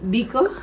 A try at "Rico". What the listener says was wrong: No pone Bico, pone Rico.